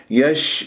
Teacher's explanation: شين يجري فيها الصوت رخاوه يجري فيها النفس مهموسه يش- ولا تقول يش يش يش لاش وسط اللسان تحكم باش